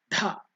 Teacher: If you use more energy, lung power, dha, then it becomes mahaprana, more energy.